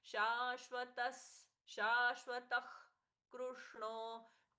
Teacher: शा दीर्घ, अच्छे से दीर्घ, श का सौम्याघात